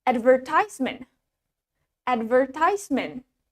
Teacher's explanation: In British accent, the stress is on the second syllable, ver. And in American accent, the stress is in the first syllable.